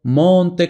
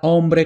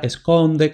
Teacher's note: Entonces habríamos tenido monte con la O abierta, hombre con la O abierta, esconde con la O abierta